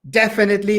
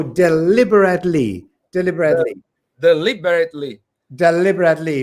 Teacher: the first one it goes on De definitely and on the second one it's Le